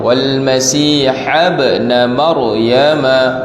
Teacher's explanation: ra mati sebelum dia berbaris atas, maka kita baca dengan ra tebal.